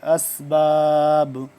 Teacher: اب با ہو گیا ساکن تو یہاں پہ ہم اس پہ قلقلہ کریں گے